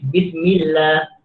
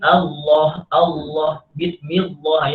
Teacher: maka kita panggil lafaz jalalah dibaca tarqiq